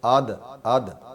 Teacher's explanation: زبر کو نیچے کی طرف مائل کر لیتے ہیں، زبر کو پڑھتے وقت